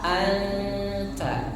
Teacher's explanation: Nah, yang paling sederhana, yang paling mudah, nah, nunnya disamarkan suaranya menjadi suara kedalamannya tergantung ikhfanya. Ada ikhfa aqrab, lebih cenderung mendekati huruf yang disebutkan, misalkan bertemu dengan ta